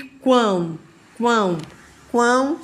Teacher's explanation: sai tudo pelo nariz não é isso